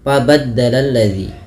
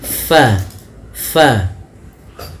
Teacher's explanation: melafalkannya jangan sampai dia terbaca dengan pabaddaladzi bibir kita rapat padahal huruf Fa ada sedikit furjahnya ada sedikit ruang yang kosong yang mana untuk mengeluarkan nafasnya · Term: hams